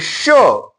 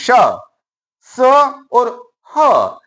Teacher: श ऊष्मा उत्पन्न हो रही है, रगड़ उत्पन्न हो रही है। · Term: ऊष्म व्यंजन